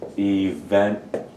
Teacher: the accents on that second syllable